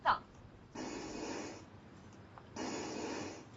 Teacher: It's a voiceless sound. The tha, because there's no vibration in the vocal folds, and the tip of the tongue is touching the upper teeth.